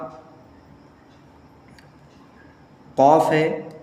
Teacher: जुबान की जड़ और ऊपर के तालु से लगाएं तो कौफ निकलता है।